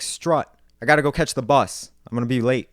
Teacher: the actual U vowel in words like strut gets moved back even further. So that way now it sounds like strut.